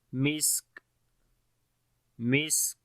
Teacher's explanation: On the scene we make whistling and hums quality, the continuation of our breath, and the sound becomes weak.